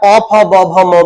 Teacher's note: इनको बोलते सिर्फ ओठों का प्रयोग हो रहा है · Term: ओष्ठय ध्वनिया